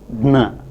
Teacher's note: Sometimes plosive can have not a very clear oral release, but another kind of release, such as nasal release